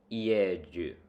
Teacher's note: you say the person the word for is is yeju pronounced the J is pronounced somewhere in between a j sound and a d y sound